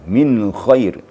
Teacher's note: Sekarang nun mati bertemu kha, min khair. Di nun dimatikan atau disukunkan hanya sekadar menjelaskan nun mati atau sukun. Tidak dilamakan. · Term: izhar hakiki